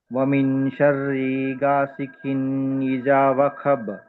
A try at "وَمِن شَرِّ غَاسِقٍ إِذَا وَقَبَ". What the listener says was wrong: 2 చోట్ల దీర్ఘం తీని చోట చేశారు. షర్రీలో దీర్ఘం లేదు, గాసికిన్లో దీర్ఘం లేదు. వమీ షర్రి గాసికిన్ ఇదా వఖబ్.